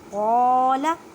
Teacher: وَإِذْ قَالَ، قاف کو ادا کرتے وقت خیال رکھیں کہ یہ کاف کی آواز نہ آئے، قاف حروف مستعلیہ موٹے حروف میں سے ہے، لام کو بالکل نہیں کھینچنا کیونکہ لام کے پر حرکت ہے